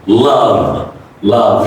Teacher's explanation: V is a voice consonant. You put some stress on it.